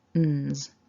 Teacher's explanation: your tongue's pressing on there to block the sound from coming out of the front of your mouth, because we want this sound to happen up in the nose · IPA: /nz/